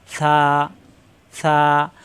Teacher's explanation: সা নরম করে উচ্চারণ, জিহ্বার আগা উপরে দাঁতের আগায় লাগিয়ে সা, সা। এখানে কিন্তু একটু টান দেওয়া যায়, সা, সা।